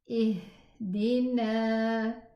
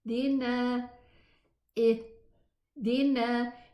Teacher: the ha was heard because the two vocal cords were just parted a little bit